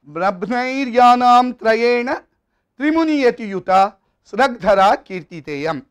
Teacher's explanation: Trimuni yati-yuta, 3 muni, muni stands for the number 7. So there is a yati, there is a pause after each unit of 7.